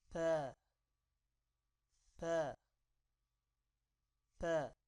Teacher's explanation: اوپر والے اور نیچے والے دانتوں کے درمیان زبان لگانی ہے